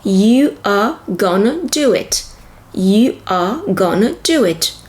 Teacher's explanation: The verb are is reduced to a single sound.